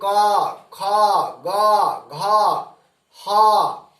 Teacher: कंठ से आ, देखिए कंठ से आवाज निकल रही है। कवर्ग में क, ख, ग, घ, ह, इन सारे वर्णों का उच्चारण स्थान क्या है? कंठ है।